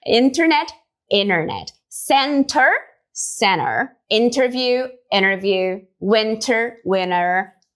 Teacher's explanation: o T simplesmente some, mas não é em qualquer caso não. É somente nesse contexto aqui que ele pode sumir, ó, quando ele estiver seguindo uma nasal. Então, ó, in, tá vendo que tem o N ali, in, e seguido do T.